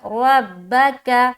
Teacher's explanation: را کو پر رکھیں گے اور تشدید والے حرف کو 2 مرتبہ پڑھا جاتا ہے، ایک بار پیچھے والے حرف یعنی کہ را سے ملایا اور ایک بار با کو خود پڑھیں گے.